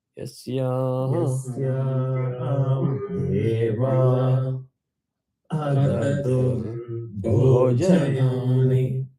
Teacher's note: Make sure bho is Mahaprana.